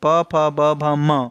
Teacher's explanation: ओष्ठ व्यंजन है फ, यानी प, फ, ब, भ, ये प, फ, ब, भ यानी कि पवर्ग ओष्ठ से बोला जाता है।